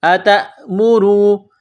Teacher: حمزہ زبر ا، تا حمزہ زبر تا، آتا میم پیش مو، را واو پیش رو، را کو واو کے ساتھ ملانا ہے، را کو موٹا کرنا ہے، را کے اوپر پیش ہے